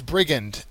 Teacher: Brigand has the first syllable accented.